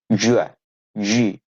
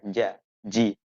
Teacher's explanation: Hati-hati saat mengucapkan jim, dia tidak punya sifat desis atau hamas, maka dia tidak boleh diucapkan dengan jim, jua, ji.